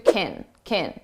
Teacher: We reduce this to kin, kin, and it's very unstressed sound.